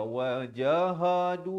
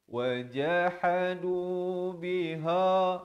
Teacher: ha di pertengahan kerongkong